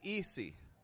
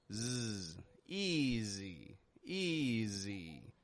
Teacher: I'm not saying easy, but I'm stretching it out. I'm giving the S a little bit more voice. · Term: S changing to a Z